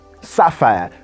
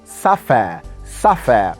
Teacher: that's a british standard pronunciation using the diphthong air at the end of the word sapphire